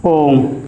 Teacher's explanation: प्लुत स्वर इस प्रकार के स्वरों के उच्चारण में दीर्घ स्वर से अधिक समय लगता है। प्लुत स्वर कहलाते हैं।